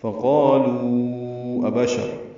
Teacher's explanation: لو میں واو مدہ ہے اور اس کے بعد حمزہ آنے کی وجہ سے مد منفصل